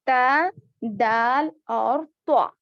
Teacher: जुबान की नोक ऊपर के दांतों के अंदरूनी हिस्से को लगने से ये 3 हुरूफ अदा होते हैं, जिसे हुरूफ निफ़इया कहा जाता है।